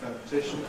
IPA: ˌfəʊnɪˈtɪʃn̩